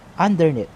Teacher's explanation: we're putting stress in the last syllable of the word